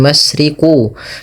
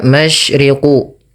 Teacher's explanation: Makhraj huruf shin dikeluarkan dari tengah lidah kita, maka ash dan sin memiliki salah satu sifat, yaitu tafasyi.